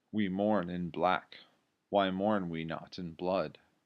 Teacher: each line consists of ten alternating unstressed stressed syllables reading iambic pentameter can result in a very singsong rhythm which